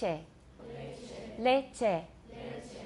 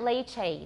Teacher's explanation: It sounds like English A, but it's not a diphthong. It's just a pure monophthong, A.